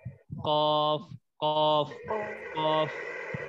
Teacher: زبان کی جڑ جب کوے کے قریب سے نرم تالو سے لگے تو اس سے قاف ادا ہوتا ہے · آپ کو یہ محسوس ہوگا کہ زبان کی جڑ اوپر تالو سے لگ رہی ہے